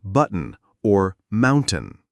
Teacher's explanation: Third, the glottle t sound where t before an n at the end of a word becomes a quick catch in the throat like in button or mountain. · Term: glottal T sound